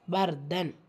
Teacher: ரா சுக்குன் பெற்று அதற்கு முந்தைய எழுத்துல ஃபத்ஹா இடம் பெற்றிருக்கு சோ இந்த இடத்துல நம்ம வல்லீனப்படுத்தி ஓதணும்